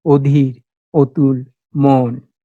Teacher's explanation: অ যদি ও এর মতো উচ্চারিত হয়, সেটাকে বলা হয় সংবৃত উচ্চারণ বা অধ্বনির মতো উচ্চারণ।